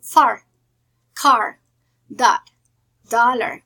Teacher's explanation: The next vowel sound is called open central, and the pronunciation is ah.